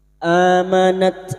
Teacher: Huruf ta memiliki sifat hames dan siddah yaitu mengalirnya nafas dan tertahannya suara. Maka pada saat disukun bunyinya amanat minqoblu nun sukun bertemu qf.